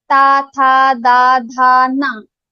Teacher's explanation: So all the ta group varnas are dantya.